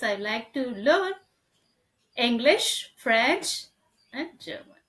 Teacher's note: the last one must go down it's a falling tone · the last one was going down falling tone so we are listing out some things the first few list